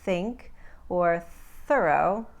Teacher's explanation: the unvoiced version where there's no vocalization when we make the sound as in think or thorough